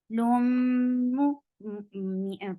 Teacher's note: This is idgham with gunna, so keep the sound in your nose for a longer time.